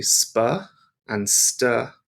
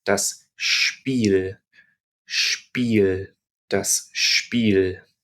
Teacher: when s is followed by a p or a t what happens is we get almost like a little H sound in there